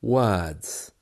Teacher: the r is gone completely